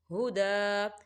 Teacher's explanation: دا کھڑی حرکات ہے، دو حرکت کے برابر کھینچا جائے گا، ہدا۔ آگے چھوٹی سی توئیں بھی نظر آ رہی ہے، یہ وقف مطلق کی علامت ہے، تو یہاں ٹھہرنا بہتر ہے۔